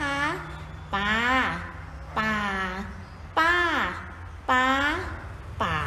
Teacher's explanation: นั่นก็คือเสียงสามัญเสียงเอกเสียงโทเสียงตรีและเสียงจัตวา